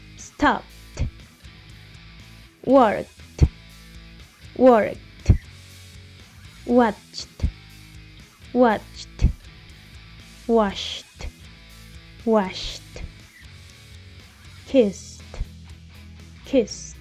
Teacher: pronunciamos ed como t, que es un sonido sordo, si el verbo en infinitivo termina también en sonidos sordos, como todos estos, por ejemplo.